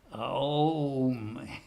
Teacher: it's not really O as in the English O, it's Aum. In other words, it's a diphthong. It's not just a single sound, O, it's Aum.